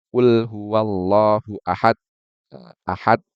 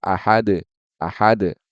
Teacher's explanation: harusnya dibaca dengan Ahad yaitu dengan Qalqalah